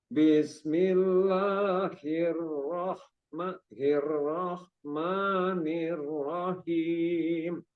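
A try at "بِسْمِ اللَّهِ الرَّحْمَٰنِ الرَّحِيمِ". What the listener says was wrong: Kurang mengalir di him. Him. Di himnya kurang mengalir. Bismillahirrahmanirrahim.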